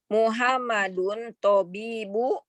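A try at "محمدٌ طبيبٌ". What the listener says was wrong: Tobibun. Tanwin.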